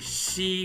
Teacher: almost like an S sort of sound but once again you feel your teeth closing at the front and the sound all comes from the front of your mouth